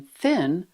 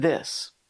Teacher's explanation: There are two main th sounds, the voiceless th like in thin and the voiced vv like in this.